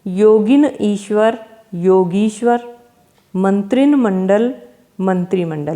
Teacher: इनमें जो आधा न है इसका लोप हो जाता है, यानी जब संधि होती है तो ये आधा जो न है ये हट जाता है, बाकी ऐसे के ऐसे रहता है। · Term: न का लोप